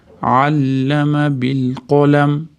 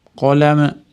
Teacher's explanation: Qolam mimda og'zimiz yopgan bo'yicha to'xtaymiz. Chunki mim labda orasidan chiqadigan harf.